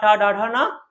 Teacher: जो ट वर्ग है इसमें हम लोग किसका प्रयोग करते हैं मूर्धन का प्रयोग करते हैं लेकिन साथ में किसका प्रयोग करते हैं हम लोग रा का